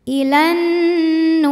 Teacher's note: huruf ro dibunyikan secara tarqik karena berbaris kasrah maka dibacanya tipis · Ilan nu. Nu mad tabi'i dhahiri karena nun berharokat dhammah bertemu waw sukun, maka dibaca panjang 2 harokat. Ilan nuri. Huruf ra dibunyikan secara tarqiq karena berbaris kasroh, maka dibacanya tipis.